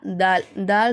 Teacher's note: நம்ம நுனி நாவு மேல்பல்லோட உள்சையில அந்த ஓரத்தை உரசும் போதுதான் நமக்கு தால் அப்படிங்கற எழுத்து வெளியாகுது